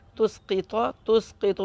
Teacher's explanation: وقف میں تو کا زبر حذف ہو جائے گا، تو ساکن ہو جائے گا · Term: قلقلہ کبریٰ